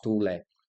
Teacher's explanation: Se a pronúncia é tule, então a forte é tu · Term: Paroxítona